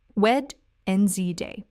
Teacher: in natural English speech, Wednesday is only said with 2 syllables.